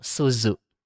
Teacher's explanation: Kalau sin ada hamas, kalau zai dia jahar.